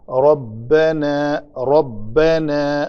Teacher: را کو پر کرنے کے لیے ہونٹ اوپر کی طرف کھلیں گے